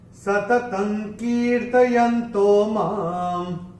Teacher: चरण की समाप्ति पे मां के ऊपर जो अनुस्वार आ रहा है, चरण की समाप्ति पे आ रहा है, इसका उच्चारण केवल और केवल मां ही होगा · पहले चरण में त के ऊपर अनुस्वार के बाद का अक्षर है क, और अनुस्वार के बाद जब क आएगा तो अनुस्वार का उच्चारण होगा अंग